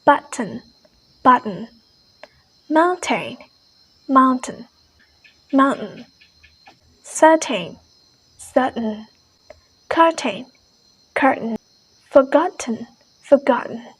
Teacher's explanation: the glottal stop is very commonly used in the british